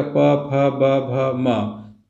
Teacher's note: ओष्ठ आता है, जैसे आप बोलेगा प फ ब भ म, तो यहाँ पे ओष्ठ सट रहा है। हमारे होंठ सटने के कारण जिन वर्णों का उच्चारण हो रहा है उनको ओष्ठ वर्ण कहते हैं